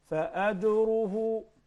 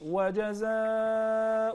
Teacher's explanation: we didn't do qalqala, we didn't shake the letter Jim